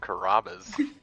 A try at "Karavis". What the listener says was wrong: There's a V, not a B.